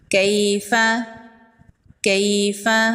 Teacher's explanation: یا لین کو نرمی سے پڑھتے ہیں اور جلدی پڑھتے ہیں۔